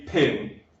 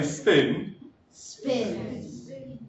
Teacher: when you have an S and then a P, the P can't be, it doesn't get the jet of air. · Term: phonological rule